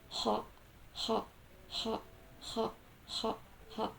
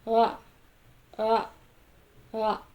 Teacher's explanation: The first one is voiceless pharyngeal fricative, and the second one is voiced pharyngeal fricative.